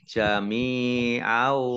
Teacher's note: mim kasroh ya sukun mat tobi'i panjang 2 harokat. Fathah tanwin bertemu dengan huruf wawu, idgham bi gunnah.